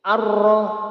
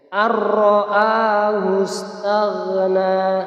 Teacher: yakni cara membacanya dimasukkan tanpa didengungkan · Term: idgham bila gunnah